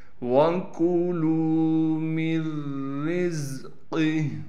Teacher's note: تو اس سے ہم پھر نون کو ختم کر دیں گے، میم کو ڈائریکٹ را سے ملائیں گے، را کو باریک کر کے پڑھیں گے، پھر را کو زا سے ملا دیں گے، قاف کو موٹا کر کے پڑھنا ہے، اور گول ہا کے نیچے کڑی زیر ہے، یہ وقف میں ساکن ہو جائے گی۔